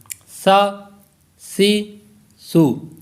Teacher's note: سا کا جو مخرج ہے وہ ہے کہ زبان کا سرا اور اوپر کے دانتوں کے اندرونی کنارے، وہاں سے یہ ادا ہوگا۔ سا زبان کا سرا اور اوپر کے جو دانت ہیں اس کے اندرونی کنارے، ان سے یہ ادا ہوگا